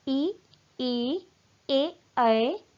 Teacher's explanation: जिन स्वरों के उच्चारण में जीभ का अग्रभाग कार्य करता है, वह अग्र स्वर कहलाते हैं।